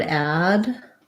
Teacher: For addict, we have the stress on the add syllable. So we have an black cat vowel.